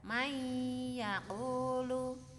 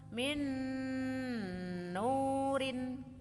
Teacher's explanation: Cara membaca idgham bigunah adalah memasukkan nun sukun atau tanwin ke huruf hidup berikutnya dengan mendengung kira-kira 2 harokat atau 1 alif